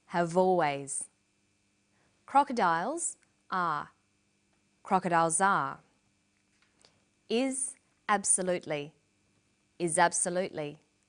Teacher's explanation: Notice how in conversation we link the final consonant sound v with the initial vowel sound or.